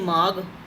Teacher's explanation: ਲਿਖਣ ਦੇ ਵਿੱਚ ਅਸੀਂ ਮਾਘ ਲਿਖਦੇ ਹਾਂ, ਬੋਲਦੇ ਕੀ ਅਸੀਂ ਮਾਘ, ਤਾਂ ਮਤਲਬ ਘੱਗੇ ਦੀ ਸਿਰਫ ਸੁਰ ਆ ਰਹੀ ਹੈ ਪਰ ਘੱਗਾ ਖੁਦ ਜਿਹੜਾ ਉਹ ਉੱਥੇ ਸਾਈਲੈਂਟ ਹੈ। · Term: ਸੁਰ ਦਾ ਵਰਤਾਰਾ